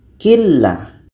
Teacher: Bunyi nun hilang masuk kepada la. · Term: idgham bila gunnah